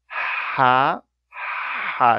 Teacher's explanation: it's a fricative continuous breath